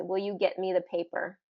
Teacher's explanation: the word get, it's really get with a short I. We don't say get.